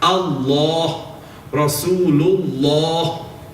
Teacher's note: if the letter before has a fatha dhamma, Allah, Rasulullah, then the lam will be read thick.